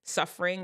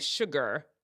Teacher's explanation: suffering it just has the s s sound and sugar still has the sh